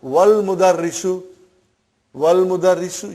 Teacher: Wal mudarrisu, you did not pronounce Hamza. Okay? Because it's Hamzatul Wasal.